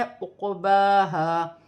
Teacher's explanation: قاف ساکن ہے، حروف قلقلہ میں سے ہے قلقلے کے ساتھ. اور یہاں پر با پر کھڑی زبر ہے، اسے بھی ایک الف کی مقدار کھینچ کر پڑھا جائے گا.